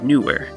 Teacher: you have the ooh vowel sound and the er vowel sound but they're treated as two separate syllables